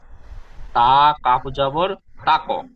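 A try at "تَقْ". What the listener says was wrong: তা কাফ নয়, কফ দুই নক্তাওয়ালা কফ, কফ স্টার চিহ্নওয়ালা অক্ষর মুখ গোল করে পড়তে হয়, পুর করে পড়তে হয়। কফ জবর তাক, বিত তাক।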